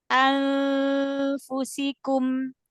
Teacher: harusnya kan yang dibaca di sini ikhfa samar, nun sukunnya dibaca samar